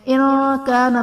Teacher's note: ارأیت ان کان، ارأیت میں را پر زبر ہے، را کو پر پڑھا جائے گا، یا ساکن سے پہلے حرف پر زبر ہے، جائلین کا قاعدہ ہے، اسے ہم نے بغیر کھینچے بغیر جھٹکا دیے نرمی سے معروف پڑھنا ہے۔ ان کان میں نون ساکن کے بعد حروف اخفا میں سے کاف ہے تو یہاں پر اخفا کا قاعدہ ہوگا، یعنی نون ساکن میں ہم غنہ کر کے پڑھیں گے